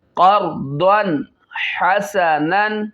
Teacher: بعد موٹا کرنا ہے، قوف موٹا ہے، را موٹا ہے